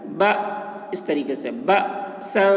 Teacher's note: با میں الف کے اوپر جزم ہے تو اس میں جھٹکا لگے گا